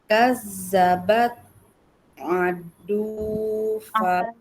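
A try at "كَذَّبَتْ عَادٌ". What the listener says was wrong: A-nya panjang.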